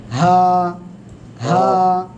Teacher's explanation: হলক বা গলার শুরু থেকে